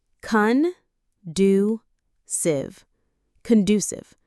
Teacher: The stress is on the do syllable.